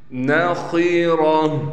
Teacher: میم کو نون سے ملا دیں گے غنہ کے ساتھ۔ نخیرہ، خا کو موٹا کر کے پڑھیں گے، اسی طریقے سے را کو بھی موٹا پڑھا جائے گا